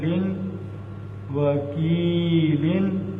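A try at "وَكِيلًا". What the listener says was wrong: ماشاءاللہ زبردست.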